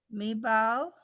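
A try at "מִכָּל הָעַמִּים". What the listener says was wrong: It's a kaf.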